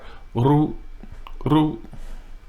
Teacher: Now that ร ู ้, you hear me just barely roll that R.